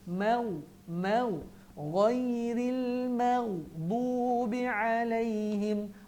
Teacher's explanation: Jangan ghairil maghdu, dia terus muncung, maghdu, salah. Ma senyum sebab nipis, ghain tebal, muncung.